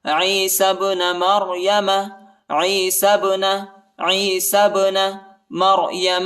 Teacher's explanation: با کو جو ہے قلقلہ کے ساتھ پڑھیں گے، ٹھیک ہے، یعنی جھٹکا دیں گے با کو